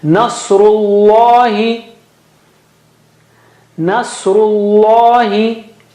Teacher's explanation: Saw is very thick and high. Very thick and high.